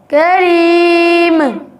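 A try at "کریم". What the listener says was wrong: करीमा। ये गलत है बेटा, मीम पे कलकला नहीं होता, रूफ़े कलकला सिर्फ 5 है। दोबारा पढ़ें, करीम।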